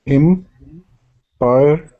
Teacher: So I think the emphasis is on the first one, im.